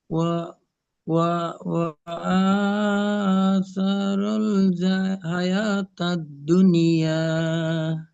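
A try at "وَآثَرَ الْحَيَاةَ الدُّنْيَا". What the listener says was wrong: হাটা আবার মাঝে মাঝে জিম মনে হচ্ছে, তাই না? জিম হয়ে যাচ্ছিল আর একটু হলে।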